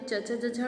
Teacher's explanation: स्पर्श व्यंजन के अंतर्गत हम तालु से च, छ, ज, झ, ण बोलते हैं। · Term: तालव्य